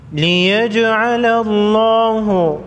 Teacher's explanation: جیم ساکن پر قلقلہ ہوگا، جیم حروف قلقلہ میں سے ہے